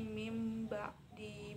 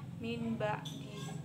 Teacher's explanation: huruf nun mati bertemu dengan ba, maka huruf bacaannya berubah menjadi mim ba di, bukan lagi menjadi min ba di. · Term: iqlab